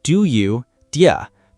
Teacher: The D and Y assimilate slightly. The vowel in do reduces.